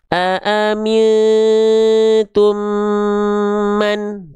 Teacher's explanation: kita tahan bunyi amnya selama 2 harokat, tahan 2 harokat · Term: idgham mimi